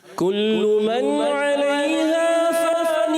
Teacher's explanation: فان کو زیادہ نہیں کھینچنا، غنہ ہم نے لمبا کرنا ہے، فا کو ایکل کھینچنا ہے.